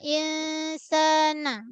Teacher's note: Nun yang berbaris dia angkos lah. Dia tak sampai satu harkat pun. Sikit je rasa juga ke hidung.